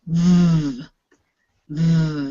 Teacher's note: you'll feel it in your throat and in your mouth there's a vibration we call this voiced